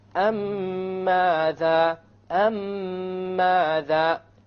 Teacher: When you have a silent meme and it's followed by another meme, then you merge them together and you do this with a ghunnah. You merge the first meme with the second meme and do a ghunnah on it. · you have a ghunna on the meme and you will make the merging or the idgham, and there will in the Quran it will be written with a shadda, so you will even know that there will be a merging here. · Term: Idgham Shafawi